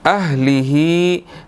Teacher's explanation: हा के नीचे खड़ी ज़ेर है, इसको 1 सेकंड हमने थोड़ा सा खींचना है